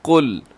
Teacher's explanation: اس میں قاف آپ نے موٹا رکھنا ہے اور لام باریک رکھیے گا،